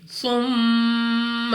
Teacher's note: غنہ سے مراد یہ ہے کہ آپ نے اپنی آواز کو ناک میں لے جا کر پڑھنا ہے، یعنی ناک سے ادا کریں گے ثم، اور اس کی مقدار 2 سیکنڈ تک آپ سمجھنے کے لیے کہہ سکتے ہیں کہ غنہ کھینچا جاتا ہے، غنہ کو لمبا کیا جاتا ہے · میم مشدد غنہ کر کے پڑھیں گے